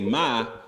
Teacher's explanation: to say mother you say ma in a high tone